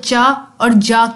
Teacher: कि हमारे पास साउंड चा और जा की हो सकती है चा और जा के अंदर ऐसा लगता है कि ये स्टॉप है लेकिन हवा बाहर निकल जाती है मुकम्मल नहीं रुकती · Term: एफ्रीकेट्स